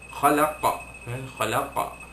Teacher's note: qalqalah kubra, melantunkan bunyi huruf qaf yang berada di akhir kalimah atau akhir ayat.